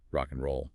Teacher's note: You'll hear sounds disappearing like the d in and often drops rock and roll.